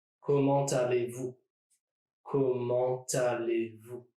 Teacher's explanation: there is a T between comment and aller · what I'm doing is dragging the T from the end of comment to the beginning of aller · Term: liaison